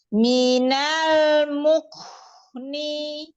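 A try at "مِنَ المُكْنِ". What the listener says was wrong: Ahsan, Masya Allah. Lanjut.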